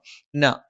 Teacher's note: നാവിന്റെ അറ്റം മേലെ മുൻപല്ലിന്റെ മോണയിൽ